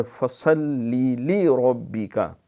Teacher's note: ہے، شد بھی ہے، تو دو دفعہ پڑھے، فصلی لی ربک، ربک را پر کر کے پڑھنا